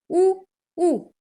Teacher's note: उच्च भी है, पीछे भी है और गोल भी है।